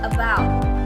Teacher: about has 2 syllables and the primary stressing on the second syllable.